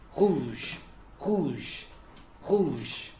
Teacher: That's a voiced uvular fricative.